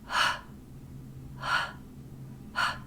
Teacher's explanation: the the phonetic symbol will just be h uh okay so it's a glottal fricative because it is a friction sound you can hear friction